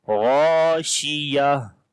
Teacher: So when we want to stop, so this ta which looks like in ha shape, this ta we convert into ha, and then there will be ha instead of ta, and which kasra you are looking under this ta, that also will be skipped.